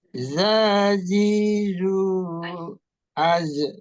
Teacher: Ini juga ada ya tadi diulang za itu matobi'i, zi matobi'i, zu matobi'i. Az itu rokhawahnya ketika dia sukun, az itu rokhawahnya nampak.